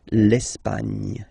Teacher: don't insist on the final E because basically it's not pronounced